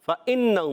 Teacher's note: فإنہم، فا کی ادائیگی اوپر والے دانتوں کے کنارے، نیچے والے ہونٹ کے ترستے سے. فإنہم، حمزہ خوب واضح کریں گے، نون مشدد، ایک الف کا غنہ کریں گے. ہم، پھر وہی اظہار شفیع کا قاعدہ.